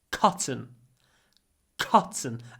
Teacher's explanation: open your mouth and then say c c cotton cotton and the a is really short because it comes before an unvoiced T